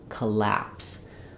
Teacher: in collapse, the stress falls on the lapse syllable, which means my letter O is going to be the schwa sound. It's going to sound like So if we spelled it more the way it sounds, we would write it with a U or UH, like collapse.